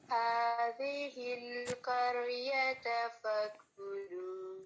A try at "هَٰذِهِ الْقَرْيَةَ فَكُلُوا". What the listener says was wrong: ابھی بھی آپ ایسے ہی پڑھ رہی ہیں، قر ایسے نہیں پڑھنا، اس کو جماؤ سے پڑھیں، قریۃ فکلوا. پریکٹس کرنی ہے، اس کو انڈرلائن کر لیں، را ساکن اچھے سے اس کی پریکٹس کرنی ہے آپ نے، ابھی بھی تھوڑا ویک ہے.